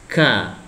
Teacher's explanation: Dan yang k ini maju sedikit, ya. Tetap k ini tetap lidah paling dalam, kemudian ditempelkan di langit-langit bagian atas.